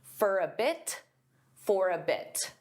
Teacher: sometimes native speakers will pronounce the T in this case because it's at the end of a sentence. There's a period.